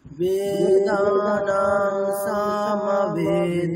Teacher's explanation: হ্যাঁ, প্রথমটার ক্ষেত্রে দেখুন যেগুলো দীর্ঘ আছে শুধুমাত্র দুটো জায়গাতে হ্রস্ব আছে, সা ম ওখানে হ্রস্ব আছে, আর স্মি ওখানে হ্রস্ব আছে, বাকিগুলো সব দীর্ঘ আছে